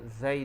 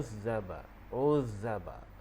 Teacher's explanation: Huruf zai di sini kita baca dia dengan bunyi seperti bunyi lebah.